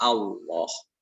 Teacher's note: lam yang diucapkan dengan tafhim seperti dalam kata Allah